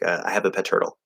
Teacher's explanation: If you're speaking really fast, then you can potentially drop that T